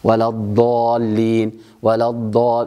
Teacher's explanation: منطقة الملامسة هي الجهة الأمامية، طرف اللسان لا يضغط حتى لا نقع في الضاد الضائية، وحتى لا يأتي ما يسمى عند بعض العوام هداهم الله وللأسف يقنن له كثير من القراء ما يسمى بضاد تشبه الدال المفخمة